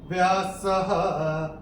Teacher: और स पे जो विसर्ग आ रहा है चरण की समाप्ति पे आ रहा है, तो इसका उच्चारण केवल और केवल ह ही होगा